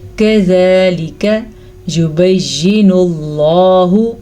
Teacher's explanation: لفظ اللہ کو پر پڑھنا ہے کیونکہ لفظ اللہ سے پیچھے زبر پیش ہے